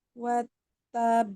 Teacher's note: Watab, naik, suaranya naik, kemudian ditahan. Ya, baru dipantul.